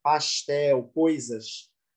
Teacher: O jeito de falar peculiar do Pantanal, o sotaque do S chiado